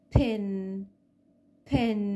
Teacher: الاسبيريتد هو خروج هوا كده مع حرف ال P، وبيكون في بداية الكلمة زي pin. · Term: aspirated P